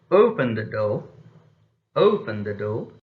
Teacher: in english falling tone is used for issuing commands and the expression is open the dough open the dough now